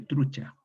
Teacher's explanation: Y esta U cerrada en romance queda U, y esta yod palataliza la T en che, truicha, y finalmente esta che palatal absorbe a la yod palatal y queda finalmente trucha.